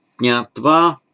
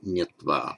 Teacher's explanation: So, as we know, we've got our root nya, to know, and it makes its absolutive regularly in Sanskrit, jnatva, and in Pali, as you would expect, this is regular phonetic mutation. The jna becomes a nya. The atva, a followed by a consonant cluster, so the a shortens.